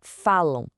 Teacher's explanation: São dois sons vocálicos juntos. Isso é um ditongo nasal.